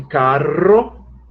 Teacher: a vibrante múltipla, que somente alguns fazem isso, que seria o de carro, só que a grande maioria do Brasil, o que faz aí é uma aspiração, seria um H, carro.